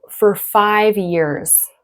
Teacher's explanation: for in connected speech, we actually say fur. Rhymes with her, okay? Unstressed.